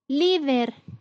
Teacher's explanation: la sílaba con mayor fuerza es li, que es la penúltima sílaba, cumple con la regla, termina en R, por lo tanto se coloca tilde. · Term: graves o llanas